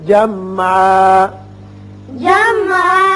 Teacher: نہیں میم پر قلقلہ نہ ہو